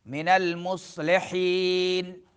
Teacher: صاد میں سیٹی نکالیں گے، پر حروف میں سے ہے.